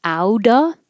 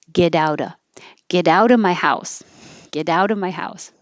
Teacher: The T changes to a D, connects to the O, and ouda. You don't have to say the V.